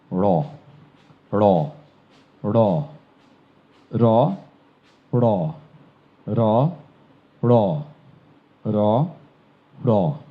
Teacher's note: অর্থাৎ আপনি যেখান থেকে ড উচ্চারণ করেন, আমরা সবাই একবার করে থাকি, করি তো, ড, ড, ড, ড, ড। ড যেখান থেকে উচ্চারিত হয়, জিহ্বাটি ঘুরে ওইখানে তালুর সাথে গিয়ে বাড়ি দিয়ে উচ্চারিত হবে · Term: ডয় বিন্দু র